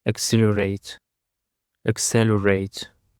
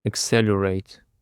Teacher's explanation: And for the first word we have accelerate, accelerate, accelerate. The stress is on the second syllable